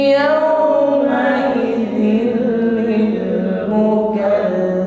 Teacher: Huruf dal tasydid, maka nampak sifatnya rakhwah. Bunyi huruf dal harus mengalir. Mukadzi, tidak boleh putus.